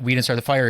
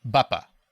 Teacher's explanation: It's in trochees, which is bapa. So it's stressed, unstressed.